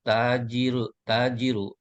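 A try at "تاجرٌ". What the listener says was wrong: Nggak ada alif lam, nggak usah ragu-ragu, tanwinkan tajirun gitu. Jadi itu bacanya Ibnu Ammarin talibun wa ibnu Yasirin tajirun.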